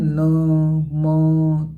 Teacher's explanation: इनके उच्चारण में हवा नाक से निकलती है, यानी आप बोल के देखेंगे न, म, तो इसमें हवा जो है ये नाक से निकलती है, इसलिए ये पंचमाक्षर कहलाते हैं। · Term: अनुनासिक वर्ण